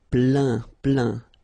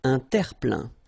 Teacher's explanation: Remember this E-I-N nasal. So it goes in your nose and it's un plein, plein.